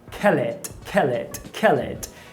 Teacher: Kill. Agora, quando você junta o kill com o et, esse L ele vira alveolar.